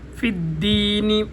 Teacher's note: فا اوپر والے دانتوں کو جب نیچے والے ہونٹوں کے ساتھ لگائیں گے تو فا ادا ہوگی